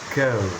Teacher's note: You can feel how your lips move slightly forward and rounded at the end. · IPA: /əʊ/